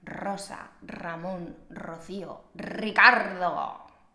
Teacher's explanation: En español, cuando la R está al principio de la palabra, siempre es fuerte. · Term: R fuerte